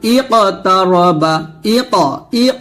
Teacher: কলকলা হবে মানে পাঁচটা হরফের উপরে সাকিন আসলে কলকলা হবে কিন্তু কফ তো মোটা করে কলকল করবো